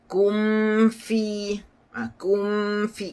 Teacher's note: Izhar dia tu, jelasnya tu tutup berat sikit, sebab huruf fa dan juga huruf waw makhrajnya di bibir, sama dengan mim. Mim kan makhrajnya di bibir. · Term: syaddu